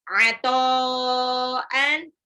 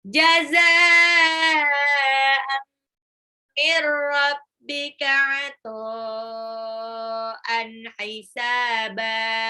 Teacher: mad wajib mutasil karena ada harokat alis bertemu dengan hamzah dalam satu kata, dibacanya 6 harokat